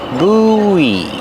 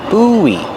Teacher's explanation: When you link the vowels, you hear kind of a W sound.